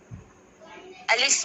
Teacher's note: अलिफ मुंह के खाली हिस्से से आवाज निकलती है